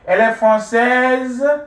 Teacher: raising your voice a little bit, getting to the end of your statement, will change your statement into a question. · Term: intonation